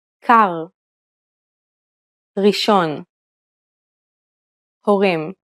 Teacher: the Hebrew R is pronounced using the back of the tongue with a slight roll you can think of it like gargling Air at the back